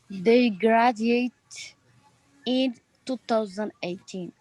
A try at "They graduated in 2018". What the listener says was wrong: Excellent, but I need to hear all the way through the word, so we need to go graduated.